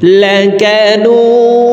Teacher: এই নুকে তিন আলিফ টেনে দালকে সাকিন করে ফেলবো এখানে আবার দাল কলকলার হরফ নিচের দিকে ধাবিত করে দালকে সাকিন করতে হবে